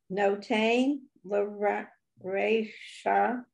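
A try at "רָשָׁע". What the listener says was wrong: Under the resh is a ah, so rasha.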